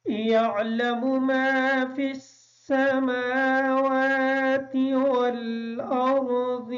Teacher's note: ما فی السماوات، میم پر کھڑی زبر ہونے کی وجہ سے میم اور واو کو تھوڑا سا لمبا کر کے پڑھیں گے